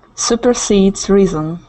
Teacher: Supersedes. The stress is at the end.